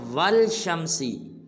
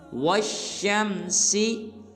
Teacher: واو کے بعد جو الف اور لام کھڑا ہے ان دونوں کو نہیں پڑھنا، بلکہ واو کو شین مشدد کے ساتھ ملائیں گے